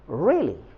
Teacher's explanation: री पे स्ट्रेस होगी, यानी इस पे जोर देंगे